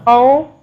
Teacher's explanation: ہے یہ پچھلے حرف سے مل کے بنتا ہے جزم اور واو کی آواز جو ہے وہ ایک الف کے برابر ہوتی ہے